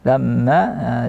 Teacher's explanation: lamma juga termasuk gunnah akmal, durasi gunnahnya lamma agak panjang